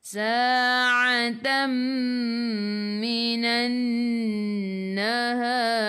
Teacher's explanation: sebelum ra ada alif, kena baca tebal, lidah naik ke atas